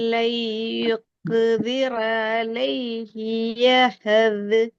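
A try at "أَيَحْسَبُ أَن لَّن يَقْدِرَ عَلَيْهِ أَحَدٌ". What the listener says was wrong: யஹது இந்த இடத்துல பிழைக்குது. அஹதுல பிழைக்குது. இந்த காஃப்ல பிழை வந்துக்குது. 3 பிழை வந்து இப்ப நீங்க ரெடி ஆகினு படிக்கிற எழுத்து படிச்சு முடிச்ச எழுத்து கல்கலால் எழுத்து காஃப். படிச்சு முடிச்ச காஃப். காஃப் எப்படி உச்சரிக்கன்னு படிக்கல. ஆனா அந்த எழுத்து கலக்கப்படணும் என்றது உங்களுக்கு தெரியும். தால் என்றதும் கலக்கப்படணும் என்று தெரியும். 3 இடத்துலயும் பிழை வருது.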